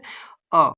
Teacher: मध्य स्वर जिह्वा के मध्य भाग से वो उच्चारित होगा। जैसे कि जिह्वा के समान अवस्था में रहती है, यहाँ पे समान अवस्था हो सकती है या फिर मध्य भाग से वो उच्चारित होता है।